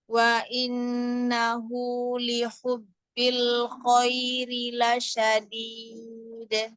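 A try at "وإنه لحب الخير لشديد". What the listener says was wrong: Wa innahu hu didorong dari itu ya, pangkal tenggorokan kan, ha besar. Nah, kalau yang ini kan dari tengah. Innahu hu ha itu ha bawah. Ha pangkal tenggorokan. Hu sempurnakan domahnya.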